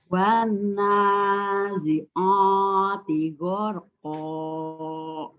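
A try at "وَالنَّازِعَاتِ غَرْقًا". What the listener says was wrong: Kayaknya ainnya wanaji'o, jangan wanaji'a. Kayak jangan tapi a. Wanazi'ati gharqa. Ya, bukan bukan a.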